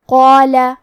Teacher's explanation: ہمیں مد الف کو بھی موٹی آواز میں پڑھنا ہے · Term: تفخیم